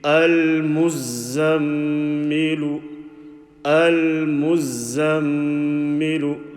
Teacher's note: We will make the gunna sound, a strong sound from the nose. · The meme, we are making a nasal sound because the meme is carrying a shaddah. When noon or meme is carrying a shaddah, we make a special sound called, beginning with ga, gunna.